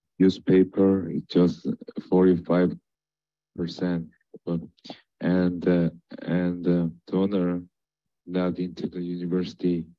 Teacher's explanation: this person is emphasizing every word. That's a big problem. There's no important prominence.